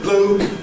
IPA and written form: bluː (blue)